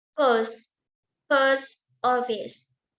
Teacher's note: In the phrase post office, this is falling intonation.